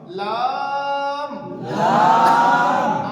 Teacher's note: জিহ্বার আগা উপরের দাঁতের গোড়ায় লাগবে, আওয়াজ লম্বা হবে